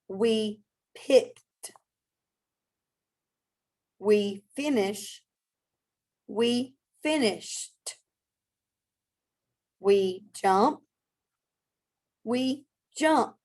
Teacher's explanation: Now you're going to add an ed, but you're only going to make the t sound.